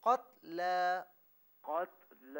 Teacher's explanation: تا پر تھوڑی جنبش دے رہے ہیں. جی جنبش نہ دیں، اسے بالکل ساکن پڑھیں